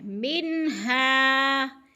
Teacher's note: من پہ بھی اظہار ہے، نون ساکن کے بعد ہا حروف حلقی میں سے ہے، منہا کی تو اظہار، ہا کے اوپر الف مدہ ہے، الف مدہ کو بھی ایک الف کے برابر کھینچ کر پڑھنا ہے۔